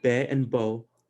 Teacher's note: the open vowels would be uh bae and bo so when you're saying that out loud your mouth is more open